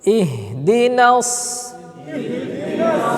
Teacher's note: হাটা নরম করে আওয়াজ হবে হ্যাঁ ভাসমান থাকবে